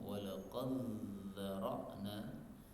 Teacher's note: dal ketemu dengan zal boleh idgham